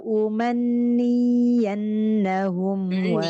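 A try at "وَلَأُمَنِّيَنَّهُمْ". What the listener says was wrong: Yang nggak panjang bayannya. Umanniyan.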